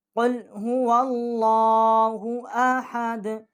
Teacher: وا جو ہے لام کے ساتھ ہم اس کو تشدید کریں گے، اور لام جو ہے اس کے اوپر کھڑا جو ہے، یہ مقصد ایک الف جتنا ہم اس کو، یہ اس کی زبر ہے، یہ کھڑی زبر جو ہے ایک الف جتنا ہم اس کو کھینچیں گے